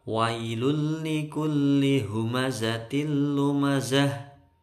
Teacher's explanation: Tanwin bertemu lam nggak boleh dengung karena ini idgham bila gunnah.